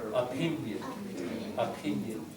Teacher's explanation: Just pin has the stress. Schwa, not o.